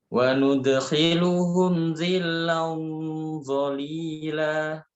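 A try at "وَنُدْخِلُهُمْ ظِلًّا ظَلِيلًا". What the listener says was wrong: Baik, dha harokat kasrah tetap tebal. Dhilla.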